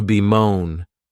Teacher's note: this verb has two syllables and the stress is on that second syllable.